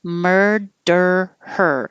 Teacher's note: your tongue is curled back has to go up for the d and then right back to the r murder her and after you say der hold it in the